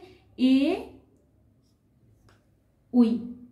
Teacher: এ ওই এর উচ্চারণ স্থান হচ্ছে কণ্ঠ তালু, অর্থাৎ কণ্ঠ থেকে নির্গত হয় এবং তালু স্পর্শ করে উচ্চারিত হয়, তাই এই দুটিকে বলা হয় কি বর্ণ কণ্ঠ তালু, কণ্ঠ তালু, এদের উচ্চারণ স্থান কণ্ঠ তালু।